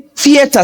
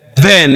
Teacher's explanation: the odd one out is then because the TH is a voiced sound.